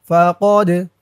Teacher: দাল কলকলের হরফ ধাক্কা দিতে হবে